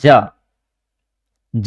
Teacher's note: तो आप एक बार ट्राई कीजिए, जैसे मैं बोल रहा हूं ज बोल रहा हूं तो हमारी जीभ क्या है, अपने तालू से टकरा रही है ना।